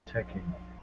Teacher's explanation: The first syllable, check, is really emphasized. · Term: intonation